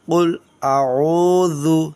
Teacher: قاف لام پیش قل، حمزہ زبر آ، عین واو پیش عو، اس کو تھوڑا کھینچیں گے لیکن اس کو جلدی پڑھیں گے۔ حمزہ زبر آ کو جلدی، عین واو کو کھینچیں گے۔ قل اعوذ، ذال کو نکالیں گے صحیح سے۔